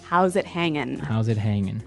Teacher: usually you don't really pronounce the G in this context cuz it's very informal